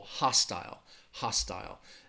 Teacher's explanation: you are going to hear that long I sound in that second syllable